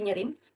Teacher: Kata nyaring telah mengalami penggantian vokal A kepada E dan penguguran konsonan G di hujung kata.